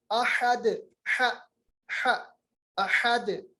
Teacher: हुवल्लाहु अहद, अहद हमजा पे जबर है, ये अक्साई हलक मखरज है इसका। हा जो है वस्त हलक से है